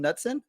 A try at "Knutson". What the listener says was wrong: It's almost spot on. Just I pronounce the K, so it's Knutson.